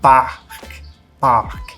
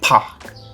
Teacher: quase que soprando aqui entre a letra p e a letra A